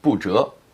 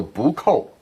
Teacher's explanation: But when it's followed by a character in the fourth tone, it changes to second tone. So 不扣. Oh, I see.